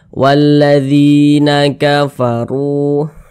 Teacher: harakat kasrah nah huruf yang memiliki harakat kasrah ini dibaca panjang sehingganya dzi dibaca panjang Mad thobii panjangnya dua harakat dua harakat itu kira-kira sepanjang dua ketukan S du walladina kafaru